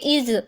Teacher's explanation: उसमें लिखा एस होता है लेकिन उसकी साउंड जो है वो ज की होती है, इसलिए वो वॉइस साउंड है